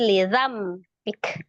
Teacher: Lizambik di situ ada nun sukun bertemu dengan huruf ba, hukumnya adalah iqlab ya. Merubah bunyi nun sukun menjadi mim sukun